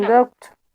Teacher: you place the stress in which syllable as a verb? In the second syllable.